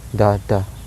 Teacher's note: So the pattern here is low, low. · opposite to spondy since it is 2 unstressed syllables. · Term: pyrrhic foot